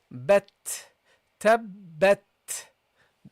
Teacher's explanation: there should be air coming out of uh from your mouth at the end of the pronunciation of the T